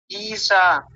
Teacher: पूरा नहीं आता आपका तालव्य शकार स जैसा आता है